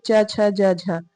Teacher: जिन व्यंजनों के उच्चारण में स्पर्श का समय अधिक होता है तथा उच्चारण के बाद वाला भाग संघर्षी हो जाता है वह जो है स्पर्श संघर्षी व्यंजन कहलाता है, जैसे च छ ज झ।